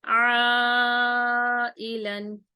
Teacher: 4 الف کے برابر اس کو کھینچیں گے